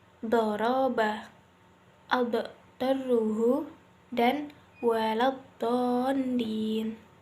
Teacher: memanjangkan lidah dari tepi lidah bagian pangkal sampai ujung tepi lidah ketika membunyikan huruf dot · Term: istitolah